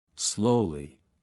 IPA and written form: ˈsləʊli (Slowly)